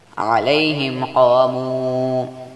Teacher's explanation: میم ساکن کے بعد قاف آ گیا جس لیے یہاں پر اظہار شفوی ہوگا، یعنی بغیر غننے کے پڑھا جائے گا